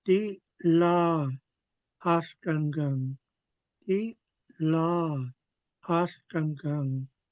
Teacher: you could really hear this glottal stop. It's a short pause